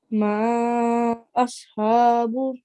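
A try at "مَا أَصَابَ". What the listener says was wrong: Okay, the meme was a bit longer. Try to make it tiny bit longer.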